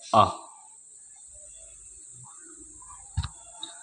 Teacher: इस मध्य स्वर के उच्चारण में जीभ का मध्य भाग काम करता है।